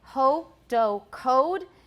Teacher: in american english it's close to o but it is a diphthong it's not just o